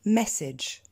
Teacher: quand AGE se situe en fin de mot, c'est-à-dire que c'est une terminaison, on dira age, un son beaucoup plus court et beaucoup plus discret.